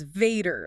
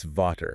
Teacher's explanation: But in German, the V, it hardens up. It becomes the English F. V equals F.